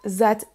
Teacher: le son th est remplacé par un son Z